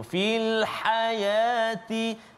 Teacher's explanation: ha pedas di tengah halqum